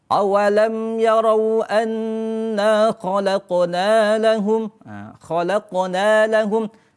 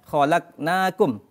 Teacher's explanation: Maka huruf qafnya harus dipantulkan. Jadinya awalam yarau anna khalaqna lahum harus dibaca dengan memantulkan. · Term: hukum qalqalah